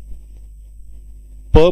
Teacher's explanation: प म्हणताना बघा दोन्ही होठ एकमेकाला स्पर्श करतात म्हणून हे ओष्ठ व्यंजन वर्ण आहे.